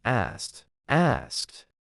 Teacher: when a verb ends in an unvoiced sound like K, the past tense ed is pronounced as a T, not as a separate syllable · The correct pronunciation is asked 1 syllable. The ed at the end sounds like a T